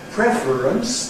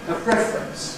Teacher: you express a ‘preference’ [ˈpref r̩ əns] (three syllables) [ˈpref r̩ əns] or in two syllables [ˈpref rəns] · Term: compression